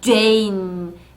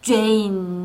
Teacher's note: J의 소리 유지되지 않는 울리는 소리이기 때문에 이 친구도 예비음을 가지고 다녀요. 그래서 그냥 Jane이 아니라 Jane 하는 소리 Jane 하고 힘있게 읽어주십시오.